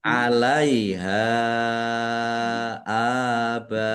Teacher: Tetapi karena bertemu dengan huruf hamzah dalam satu kata baa ini satu kata maka menjadi mad wajib muttasil. Mad wajib muttasil dibaca panjang harus lima harakat.